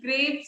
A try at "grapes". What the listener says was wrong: ग्रैप्स नहीं होता, ग्रेप्स होता है यार. कैसी प्रोनाउंसिएशन है ये?